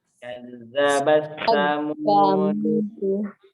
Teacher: Di sini kita masukkan langsung huruf ta ke huruf ta. Jadi tidak dibaca huruf ta-nya. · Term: Mutaqaribain